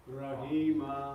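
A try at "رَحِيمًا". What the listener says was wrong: Good. Make the ha a bit more spicy. Rahima.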